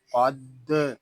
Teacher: یہاں قاف حروف مستعلیہ میں سے ہے، اس کو پر یعنی موٹا پڑھیں گے۔ آگے دال مشدد ہے، اس کو جماؤ کے ساتھ ادا کریں گے۔